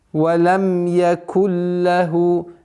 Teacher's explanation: Без назализации идгам биля гунна. То есть нун переходит в звук лям полностью, без назализации. И ассимилирование полное.